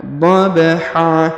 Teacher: dobha perhatikan huruf ba dipantulkan atau diqolqolahkan dobha kemudian huruf Han tanwin an kita rubah menjadi ha ya karena sudah berada di ujung ayat · Perhatikan huruf ba dipantulkan atau dikolkolahkan.